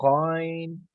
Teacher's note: بالکل گلے کی جہاں سے غرارہ کرتے ہیں